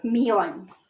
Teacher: So million in Spanish is millón. So stress on the O, millón.